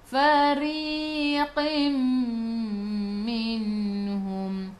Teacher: Tanwin tak sama bertemu dengan mim. Mim atasnya ada. Sabdu kelas idgham ma'al gunnah. Masuk bersama dengung. Dengung 2 harakat.